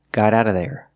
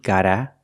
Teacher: The T in got is a fast D. Gotta. Out is ada.